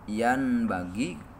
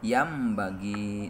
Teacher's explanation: Contona nun pae mayunan ba yan bagi tapi dibacana harus yam bagi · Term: iklab